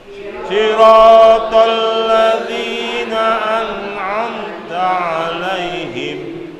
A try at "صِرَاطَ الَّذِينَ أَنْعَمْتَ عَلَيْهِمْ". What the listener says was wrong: Tidak terdengar suara bunyi nun sukun yang kemudian diseret bacanya atau seolah-olah dipantulkan nun yang sukun. Nun sukun bukan kita baca dengan cara qalqalah, dipantulkan.